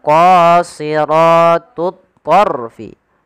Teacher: Kemudian pada lafaz ra di sini ada hukum tajwid berupa huruf ra tafkhim atau bacaan ra tafkhim, yang dimana ra-nya dibaca dengan tebal karena ada huruf ra sukun yang didahului dengan huruf fathah